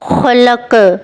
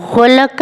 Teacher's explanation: خا، اس کا احساس کھردرا ہوتا ہے اور آواز ہلکی سانس والی نکلتی ہے، جبکہ غین، اس کا احساس بھرپور ہوتا ہے، جبکہ آواز بھاری اور گونجدار ہوتی ہے